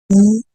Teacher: an alveolar fricative and voice sound